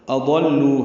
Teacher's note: حمزہ قصہ حلق سے ادا کریں گے، واضح پڑھیں گے